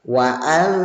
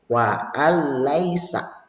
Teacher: Bunyi nun sukun dimasukkan ke dalam suara lam dan tidak boleh ya dibaca secara mendengung. Jadi gak boleh baca wa'al, itu gak boleh ya, tapi harus wa'al laisa. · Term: idgham bila gunah